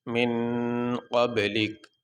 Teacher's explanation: جب وقف کریں گے تو کاف کو ساکن پڑھیں گے، یہ جو اوپر زبر ہے یہ نہیں پڑھیں گے